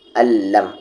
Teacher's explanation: جب آپ کو تنوین یا نون ساکن کے بعد لام یا را آئے گا تو آپ ملائیں گے ضرور، لیکن بنا غنہ کے، یعنی وداؤٹ غنہ کے۔ الم، آواز ناک میں نہیں جائے گی، بالکل بھی نہیں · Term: ادغام وداؤٹ غنہ